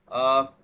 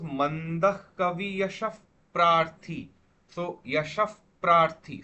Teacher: after the Visarga, if a pa comes, you would have to pronounce this as uh, so suppose Mandah Kavi Yashaf Prarthi. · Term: Upadmaniya